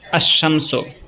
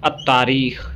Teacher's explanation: इनके कबल जब अरबी का अल आता है तो लाम का जो तलफ़्फ़ुज़ है वो नहीं होता, और लाम के बाद का हरूफ मुशद्दद हो जाता है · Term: हुरूफ शमसी